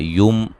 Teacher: میم ساکن کا اظہار ہے، غنہ نہیں کریں گے